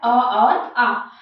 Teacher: कंठव्य जो है वो स्वर कंठ से निकलता है और वो है अ और आ।